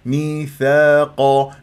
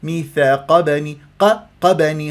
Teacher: مطبع حركتين ثاء الف ساكن قبلها ثاء مفتوح ما الطبيعه حركتين القاف من احرف الاستعلاء مفخم مرتبه ثانيه